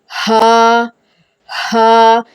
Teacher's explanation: ये हा और हमजा तकरीबन एक ही जगह से सीने की तरफ से अदा होते हैं।